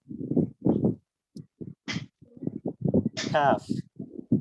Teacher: জিওভার গোড়া থেকে একটু সামনে যে অংশটা সেটা উপরের তালুর সাথে লেগে উচ্চারিত হবে কাফ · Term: পাতলা কাফ